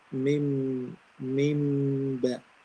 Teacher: So we don't close the 2 lips tightly and we don't make obvious gap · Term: iqlab